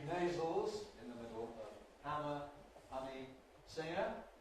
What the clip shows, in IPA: ˈhæmə